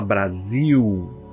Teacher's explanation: a gente em português fala Brasil esse l tem som de u